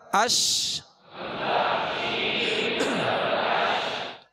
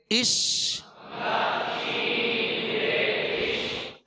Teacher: اور اس کی شین کی ادائیگی میں آواز منہ میں پھیل جائے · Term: تفشی